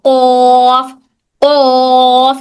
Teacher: जबान की जड़ और नरम तालू से अदा होता है। जब हम जबान की जड़ को नरम तालू से लगाते हैं तब कौफ की आवाज निकलती है।